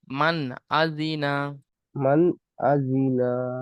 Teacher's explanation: হামজা এসেছে। তাই নুন সাকিনের আওয়াজকে বিনা গুণনায় জাহির করে পড়তে হবে।